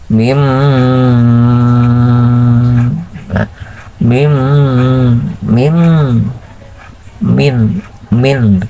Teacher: keluarnya Nun itu kan dari ujung lidah pindah ke Pangkal hidung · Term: iklab